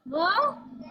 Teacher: दांत और ओठ दोनों से बोलते हैं। दंतोष्ठ, व दंतोष्ठ, व दंतोष्ठ दोनों से बोलते हैं।